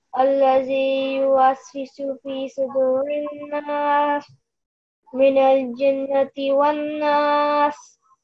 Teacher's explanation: you did a nasal sound on every single na, noon